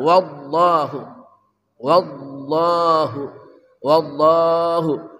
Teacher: lamnya tagliz, tebal, sangat tebal